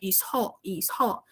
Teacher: Mas o som SS duplicado, ele é is, ok? Então, a gente aspira, faz mais forte.